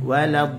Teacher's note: Da 6 harakat masuk ke lam, kita tekan sedikit lah. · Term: an-nabr